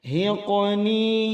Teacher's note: huruf rohnya tabkhim atau tebal karena sebelumnya ada dhammah. Hiqni, qalqalah sughra, cara mengqalqalahkannya berjalan, tidak dibaca terhentak pada bunyi suara huruf hamzah.